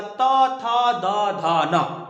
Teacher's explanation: जिस वर्ण का उच्चारण दंत से होता है, यानी जीभ और दांत के स्पर्श से होता है, उसे दंत वर्ण कहते हैं